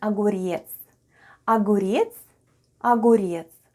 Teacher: The first sound is o. It's unstressed and is pronounced as a. Then goes g.